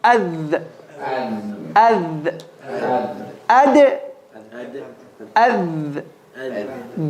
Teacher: the tip of the tongue should be between the top and bottom teeth. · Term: dal